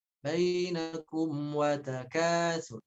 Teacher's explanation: Jangan dipantulkan bainakum wa. Jangan, ya disambungkan langsung masuk ke wawu.